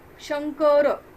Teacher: अनुस्वारापुढे 5 वर्गातील कोणतेही व्यंजन आले तर त्या व्यंजनाच्या शेवटच्या अनुनासिकाचा अनुस्वाराबद्दल उच्चार केला जातो. म्हणजे शंकर यानंतर जेव्हा अनुस्वारानंतर जेव्हा क येतो तेव्हा त्याचा उच्चार न वाङ्मयातला जो म आहे त्या पद्धतीने केला जातो.